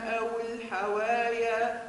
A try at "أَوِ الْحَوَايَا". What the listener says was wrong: أو الحوايا كسرة الواو